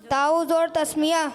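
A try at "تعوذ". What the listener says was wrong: ताऊज़ नहीं होता, तावुज़ होता है। ये देखें, ता ज़बर ता, आइन वाव ज़बर औ, ताऊ वाव पेश वू, तावुज़ वाव जाल पेश वुज़, ठीक है।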